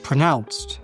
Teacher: The schwa is in the first syllable.